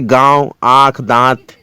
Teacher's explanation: ऐसे स्वरों का उच्चारण नाक और मुंह से होता है और उच्चारण में लघुता रहती है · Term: अनुनासिक